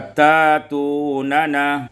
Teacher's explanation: ibdalul hamzati alifan, dengan menukarkan hamzah alif, sehingga kita baca tatunana